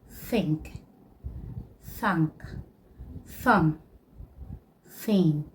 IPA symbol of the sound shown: θ